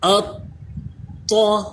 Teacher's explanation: لیکن اس کے ساتھ جب یہ طا حروف مستعلیہ آ گیا تو آپ جانتے ہیں کہ طا حروف مستعلیہ بھی ہے، یعنی اس کو پر بھی پڑھنا ہے، موٹا پڑھنا ہے، اور ساتھ ہی ساتھ طا جو ہے یہ حروف قلقلہ بھی ہے، تو اس میں قلقلہ بھی کر کے پڑھنا ہے۔